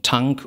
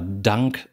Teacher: ob sie nun Tank oder Dank sagen da macht der Stimmton die Bedeutung aus